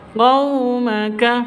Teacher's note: sifat lin, lentur, lemas, tidak boleh disentak.